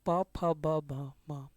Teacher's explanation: पा, फा, बा, भा, मा, ये लिप्स से।